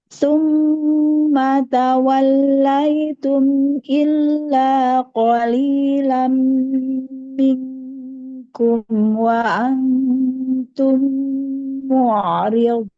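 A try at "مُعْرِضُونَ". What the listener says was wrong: Iya, Ain coba tipiskan lagi. Mu'riyadun.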